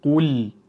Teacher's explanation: lam harfimiz sukunli holatda kelgandan keyin buni biz birozgina izhor qilib qo'yishimiz kerak